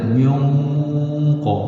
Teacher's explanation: nun mati bertemu dengan qaf asyaddu quwwatan min qat itu dengung tebal bukan dengung nipis